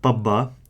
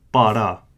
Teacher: do not forget that pabba is an aspirated B, so it makes a pabba.